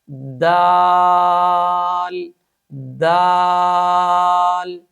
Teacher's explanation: सिफते शिद्दत की वजह से इस हर्फ को सख्ती के साथ अदा किया जाएगा। दाल दाल नंबर चार सिफ इस्तफाल और इनफता की वजह से इस हर्फ को खूब बारीक अदा करेंगे।